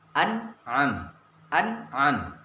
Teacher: tidak ada dengung di sini. N-nya hanya 1. Kalau nun-nya sukun, N-nya hanya 1. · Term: izhar